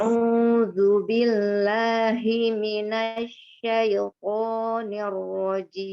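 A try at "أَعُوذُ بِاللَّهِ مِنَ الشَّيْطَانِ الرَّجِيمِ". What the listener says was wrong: Ya, hi-nya pendek ya. Bismillah. Hi-nya tidak terayun. A'udzu billahi minasyaitonir rajim. Hi-nya pendek ya. Billahi minash langsung.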